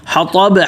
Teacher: ہا پتلا اور طا موٹا. حطب, اور با پہ قلقلہ.